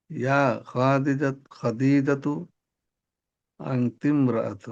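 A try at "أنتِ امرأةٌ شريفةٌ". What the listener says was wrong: আনতিম রাআতুন শরীফাতুন। আপনি কেন তানবিন ফেলে দিচ্ছেন, কেন পরিবর্তন করছেন? এই কেনর উত্তরটা আপনার জানা থাকা লাগবে, হ্যাঁ। অকারণে কোনো পরিবর্তন করা যাবে না, তো এখানে কোনো কারণ নেই।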